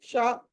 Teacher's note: ఇది ఈ షా ఎలా పలకాలంటే మూర్ధన్యం